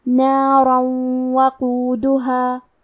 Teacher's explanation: ادغام کا معنی ہے حرف کو حرف میں داخل کرنا، تو ہم تنوین کو واو میں ملا کے غنہ اور تشدید کے ساتھ یہ حکم کو ادا کریں گے · کلمت وقودها میں واو پہ زبر ہے تو ہمیں واو کو زبر سے پڑھنا ہے. حرف القاف کو موٹی آواز میں پڑھیں گے اور اس کے پیش کو ظاہر کریں گے · کلمت نارن کے آخری میں را پہ تنوین زبر ہے تو ہمیں را کو موٹی آواز میں پڑھنا ہے